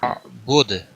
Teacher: دال ساکن ہوگا، اس پر قلقلہ بھی ہوگا، وقف کی صورت میں جب دال ساکن ہوگا اس پر قلقلہ بھی ہوگا۔